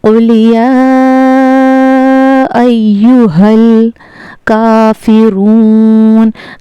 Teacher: हा का मखरज हलक के सीने की तरफ वाले हिस्से से अदा होता है